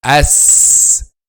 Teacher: Okay, the tip of the tongue touches the edge of front 2 lower incisors, this part. So the tip of the tongue touches the edge of front 2 lower incisors, as, and then the sound passes between the upper and lower front incisors